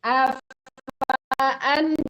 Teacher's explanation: jangan dipanjangkan fa-nya karena alifnya ada harakatnya ya.